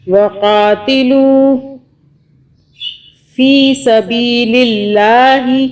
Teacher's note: اللہ کو ہم باریک پڑھ رہے ہیں کہ اللہ سے پہلے لام کے نیچے زیر ہے